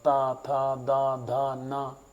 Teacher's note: दांत में लगेगी जीभ बार-बार